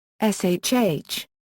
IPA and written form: ʃːː (Shh)